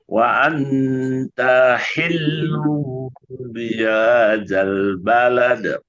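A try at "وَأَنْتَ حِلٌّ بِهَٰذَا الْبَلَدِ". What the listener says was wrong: Enggak, taknya udah panjang taknya. Taknya pendek.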